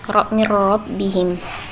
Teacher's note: huruf ra dibaca tafkhim atau tebal, ra, sebab berharakat fathah.